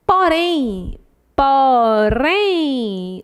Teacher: última sílaba mais forte é uma oxítona